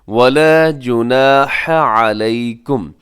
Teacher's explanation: الف مدہ، اس کو 1 سیکنڈ تک لمبا کیا جاتا ہے